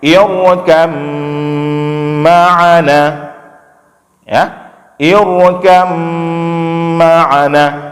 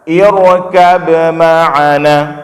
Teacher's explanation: Disebutkan oleh para ulama kita, pada bacaan ini boleh kita masukkan ba ke dalam mim, maka jadi bacaannya irkam ma'ana, ya, irkam ma'ana, tidak dibaca irkab ma'ana.